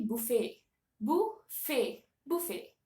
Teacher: But the T at the last of the word, buffet, the T is silent. Okay, so the actual pronunciation should be buffet.